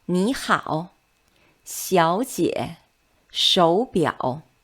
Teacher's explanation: The first one is the change of the third tone. When 2 third tone syllables are read together, the first syllable turns into the second tone. This is just to make the pronunciation easier.